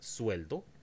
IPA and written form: sueldo (sueldo)